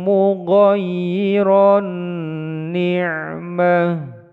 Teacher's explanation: Tanwin dimasukkan pada nun, idgham, biguna, ditekan panjang, dua ketukan.